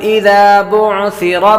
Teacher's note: سا کے اندر سیٹی کی آواز نہیں آئے گی